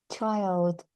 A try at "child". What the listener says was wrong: Try to soften your ch sound. So, child.